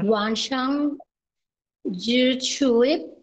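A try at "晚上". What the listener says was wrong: এটা জি না এটা হচ্ছে হাই হাই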